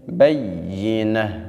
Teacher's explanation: تأتیہم البینہ، جب بھی آپ نے گول تا کے اوپر وقف کرنا ہے تو گول تا حالت وقف میں ہا سے تبدیل ہو جاتی ہے